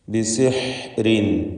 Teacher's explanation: ബിസിഹ്രിൻ എന്ന് പറയുമ്പോൾ ഹ തൊണ്ടയുടെ മധ്യമാണ് മഖ്റജ്. ബിസിഹ്രിൻ എന്ന് വ്യക്തമാക്കി ഹ ഉച്ചരിക്കുക.